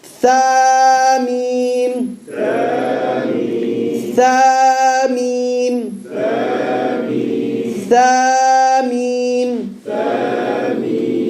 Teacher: The tip of the tongue between the top and bottom teeth.